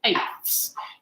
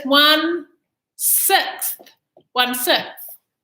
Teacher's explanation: stick our tongue out for that th sound at the end of some of them